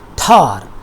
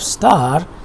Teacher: For example, if you pronounce this t, it is quite different from the one we have in star. This is pronounced as tar, which is with ha sound, which is called aspiration, while in the case of star, there is no ha sound.